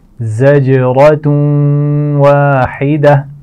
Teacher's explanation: زا کے مخرج کا خیال رکھیے، اس کی آواز میں سیٹی ہوگی